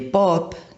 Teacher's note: En el ejemplo de pop que tenemos ahí, la P inicial es una consonante, un fonema que es oclusivo por el modo de articulación, porque primero cerramos y después liberamos el aire, es bilabial porque se produce juntando los labios, y es sorda porque no implica vibración de las cuerdas vocales